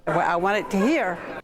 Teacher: The second feature here is a glottal replacement of final consonants. You can hear the glottal stop instead of a T.